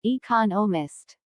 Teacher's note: economist this content word has new information so it is emphasized there are four syllables in economist with the stress on the second syllable